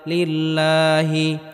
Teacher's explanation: আল্লাহ শব্দের পূর্বে জের থাকার কারণে আল্লাহ শব্দকে চিকন করে পড়তে হবে